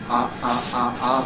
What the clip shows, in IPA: aʔaʔaʔaʔ